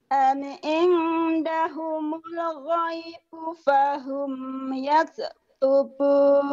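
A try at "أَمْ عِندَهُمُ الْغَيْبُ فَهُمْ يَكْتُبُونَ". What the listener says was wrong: Jangan ada kol-kolah, yaks. Tadi kedengarannya kayak kol-kolah, yak. Yaks. Jangan ada e-nya ya.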